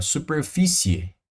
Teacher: Você vai escutar o som desse I, ó, superfície. Veja que o E, ele aparece um pouquinho mais que o I. Então, o I é mais fraco e o E é mais forte. Se eu vou do mais fraco para o mais forte, pessoal, o ditongo ele não é decrescente, ó.